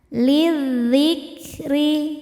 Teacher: Selanjutnya ada hukum alif lam syamsiyah. Sebab alif lam menghadapi huruf syamsiyah yaitu dzal. Cara bacanya dimasukkan ke zal.